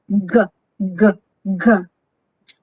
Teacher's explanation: The sound g is voiced, velar, stop consonant. Touch your soft palate, okay, and with the back of your tongue, move your tongue sharply downward and let air out in short bursts.